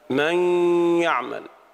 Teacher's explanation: وإما أن يكون ناقصا، وهذا معناه أن يبقى ما يدل على الحرف، مثل قولنا تعالى من يعمل. النون ذهبت ولكن بقيت الغنة الدالة عليها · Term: إدغام ناقص